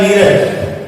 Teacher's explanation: निर है और रज है, र का लोप ई का दीर्घ हो जाएगा